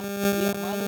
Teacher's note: dhammah dari huruf lam bertemu dengan waw sukun. Jadi lu itu dibaca sepanjang dua harkat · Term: dibaca panjang dua harokat